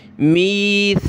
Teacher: می سا زبان نکالیں سا پہ, میثاقکم بڑی قاف, پھر چھوٹی کاف جو ہے, کاف میم پیش کم, قکم میثاقکم.